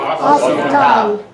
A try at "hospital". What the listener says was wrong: Don't pronounce the H.